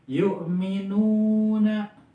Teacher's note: Alladzina yu'minu, nah ketemu lagi yu'minuna. Yu'minu itu ada waw mati setelah domah. Nah, ini mad tabi'i lagi dibaca 2 harokat.